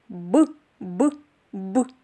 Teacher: звук Б пісеньки не виходить звук немов вибухає